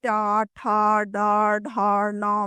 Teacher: ट वर्ग यानी ट, ठ, ड, ढ, ण में हवा मूर्धा को स्पर्श करती है।